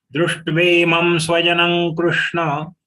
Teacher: The anuswar has to be pronounced as ga because next ka is coming.